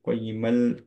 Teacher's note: তানউইনের পরে নুনের সাথে এটা মার্জ হয়ে যাচ্ছে